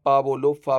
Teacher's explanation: जब हम इनका उच्चारण करें तो हमारे दोनों होंठ आपस में मिलने चाहिए। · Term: ओष्ठ ध्वनियां